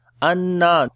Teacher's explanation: on the noon we make gunna, there is a shadda sign and also we long due to alif madda